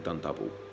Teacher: that phrase done double is a nice one to remember the plosive alliteration